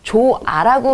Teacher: 좋아를 우리가 원칙적으로 발음을 한다면 뒤에 모음으로 시작하는 어미가 있기 때문에 히읗이 연음이 되면서 조하가 되어야 하지만 우리는 히읗이 탈락이 된 조아라고 발음을 하죠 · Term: 히읗 탈락